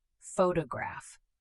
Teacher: The stress is on the first syllable. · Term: word stress